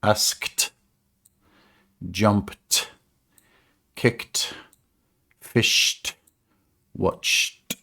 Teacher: So these are unvoiced, and we literally pronounce it as a T sound.